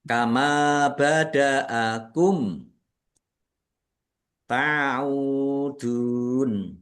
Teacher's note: mim sukun bertemu dengan huruf ta bacaan izhar syafawi dibaca jelas